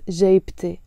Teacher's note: I have to pronounce the T مربوطة and it becomes جيبتي, my pocket.